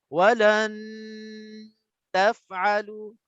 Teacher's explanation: Dia dengung 2 harakat untuk nun mati dulu. Puas dia 2 harakat, baru dia pergi kepada nak sebutnya ta. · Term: cara ikhfa yang salah